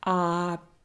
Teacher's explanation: And another position that we want to look at is if my word starts with the vowel O. If my word starts with vowel O, it is also more open. Операция. It also sounds like a.